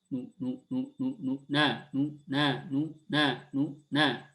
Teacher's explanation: Nah, yang nu-nya lebih cepat dan lebih kecil suaranya. Ya. Makanya kadang disebut juga ikhtilas. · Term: raum